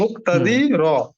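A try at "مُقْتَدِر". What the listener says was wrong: মুকতাদির, আপনার হরকতের উচ্চারণ টান ছাড়া দ্রুত পড়তে হয়। আবার যখন মিলিয়ে পড়ছেন তখন আপনার টানের টোন চলে আসছে।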